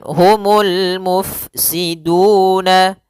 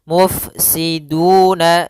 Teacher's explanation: Alirkan dalam huruf fa sifat hamsnya yaitu mengalirnya nafas. Mufsiduna, ada dhammah bertemu waw yaitu mad tabi'i.